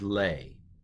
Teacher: The aleph kind of goes away, kind of disappears in the sound here. It's called a quiescent aleph.